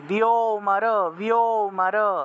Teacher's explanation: বিয় এবং অমর একসাথে বলতে হবে বিয় উচ্চারণ করলে অ চলে আসে অটোমেটিকভাবে অ চলে আসে